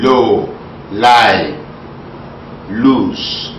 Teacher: the lateral, the L sound, as in low, lie, loose, the first sound in those words